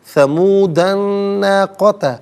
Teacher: وَآتَيْنَا ثَمُودَ النَّاقَةَ، ثمودہ میں دال پر زبر ہے، اسے الناقۃ کے نون کے ساتھ ملائیں گے، نون کی آواز کو غنّے کے ساتھ ادا کیا جائے گا